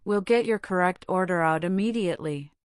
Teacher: The word immediately is stressed for reassurance.